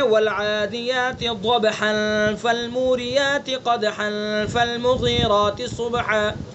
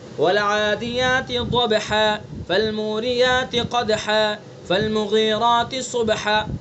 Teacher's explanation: اگر ہم وصل کر کے پڑھیں گے تو دو زبر ہی پڑھیں گے، اور اگر ہم وقف کریں گے تو اب دو زبر کو الف سے بدل کر پڑھیں گے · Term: وقف بالابدال